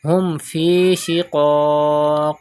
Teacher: Do qalqala in qaf. Qalqala means to rebounce the sound, to return the voice. Because qaf is from qalqala letters.